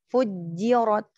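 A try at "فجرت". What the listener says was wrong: Ahsan.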